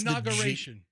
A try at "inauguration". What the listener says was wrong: Yeah, so you said it wrong. It's not inauguration. It's inauguration. So you in the middle, the GU, it's got to be GUR. GUR.